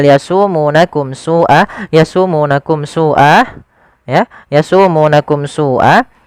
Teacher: adanya mim mati bertemu dengan huruf Sin maka dia harus dijelaskan suara mimnya yasakum Sua tidak boleh yasumunakum Sua tidak boleh ditahan tapi dia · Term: izhar syafawi